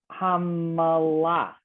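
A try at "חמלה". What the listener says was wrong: this case, because there's nothing under the mem, the middle one, I would be a contraction hamla. I mean, you can, again, this is not a real word. It's not going to you're not going to find this. And it's not uncommon where someone would pronounce the M with a little to it, which is what you did.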